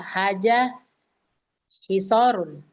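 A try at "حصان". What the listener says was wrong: Hisonun. Nun itu. Hisonun.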